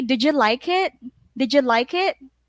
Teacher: So you have to keep the rising tone. And then D plus Y is J.